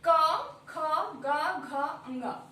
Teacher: इसका उच्चारण स्थान कंठ है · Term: स्पर्श व्यंजन